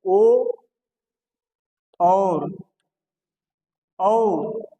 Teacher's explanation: ओ और औ का उच्चारण स्थान कंठ और ओष्ठ है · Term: कंठोष्ठम